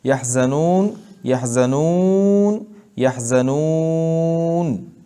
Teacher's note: اس میں طول توسط قصر تینوں مد جائز ہیں جب آپ نون کو ساکن پڑھیں